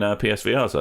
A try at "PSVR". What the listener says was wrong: It sounded like you said PRs. PSVR.